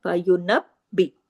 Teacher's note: با کے اوپر تشدید ہے، ٹھیک ہے، 2 با ہے، فینبی، 2 دفعہ با کی آواز کو آنا ضروری ہے، سختی سے ملا کے جوڑ کے پڑھنا ہے